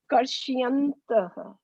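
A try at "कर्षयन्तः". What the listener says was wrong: Why is it Ye? Why is it Karshi? Why is it Karshi? Why is the I there? Why are you pronouncing I? There's no I there in that word. Why is Karshi? Why is Why is it Karshi? You're Karshayantaha. Shayanta and Shyanta are two different words, right? You have to use your eyes and put your eyes on what Prabhupada has written here.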